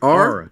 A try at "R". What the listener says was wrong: No, R. No, you said R. You put an A at the end of your R.